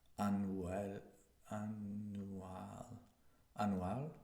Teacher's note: And you cut this Y sound that comes in English.